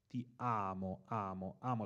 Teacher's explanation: l'accento sulla A e poi c'è ancora un'altra sillaba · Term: piane